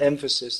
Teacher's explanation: In the word emphasis, the emphasis is on the first syllable.